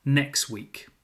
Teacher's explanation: In fast natural speech, the T in next often disappears. It sounds like next week, not next week, next week. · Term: elision